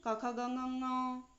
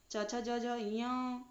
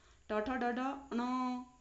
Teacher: इन पंचमाक्षरों का जो उच्चारण स्थान है वो अपने वर्ग के साथ साथ नासिका भी होता है